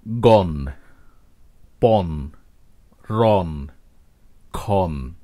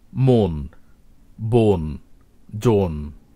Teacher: একাক্ষর বা মনোসিলেবল শব্দের প্রথমে অ এবং পরে যদি দন্ত ন থাকে তখন কিন্তু শুরুর অটি সাধারণত ও বা ওকারের মতো উচ্চারিত হয়ে থাকে